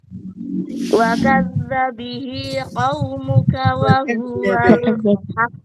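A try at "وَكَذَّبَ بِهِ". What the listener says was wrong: Ada baknya di awal Mbak tadi. Wa kadzdzaba bihi.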